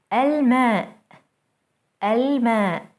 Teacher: notice how Moon letters allow the L to be pronounced fully